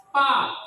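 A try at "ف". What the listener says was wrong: bibirnya salah PA pis Allahu Akbar salah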